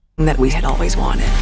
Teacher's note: almost whispering towards the end of the sentence.